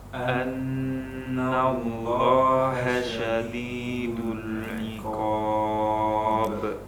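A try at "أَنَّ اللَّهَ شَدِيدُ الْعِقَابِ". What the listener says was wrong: Baik, untuk antum pribadi seperti yang kita sebutkan tadi ada beberapa PR, lam sukun, kemudian qafnya, kemudian sodnya. Qafnya artinya tidak boleh terlalu banyak angin, kemudian sodnya harus kita tebalkan, dan menebalkannya bukan dengan memonyongkan mulut.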